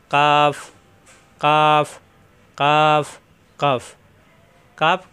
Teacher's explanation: জিহ্বার গোড়া থেকে একটু আগে বাড়িয়ে উপরের তালুতে লাগবে